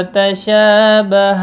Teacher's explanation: شین کے اوپر کھڑی زبر ہے، ایک الف کے برابر کھینچ کر پڑھیں گے